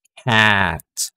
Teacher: So, kung mararamdaman nyo, cat, yung tunog ay nasa harap ng ating dila or ng ating bibig at mababa yung position niya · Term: low front